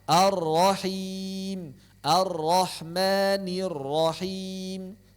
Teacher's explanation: tidak ada lamnya langsung ke ro bertasydid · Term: diidghamkan